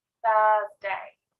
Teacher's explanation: i put my tongue in between my teeth to make that sound at the start